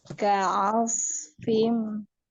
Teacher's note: Ka'asfim itu dengan memonyongkan bibir, ainnya tidak tebal ya, tipis ainnya. Ka'asfim. Gitu susah.